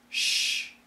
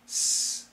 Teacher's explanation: the tip of the tongue is the same but the sides of the tongue for the sh they're touching for the S it's just relaxed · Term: sh sound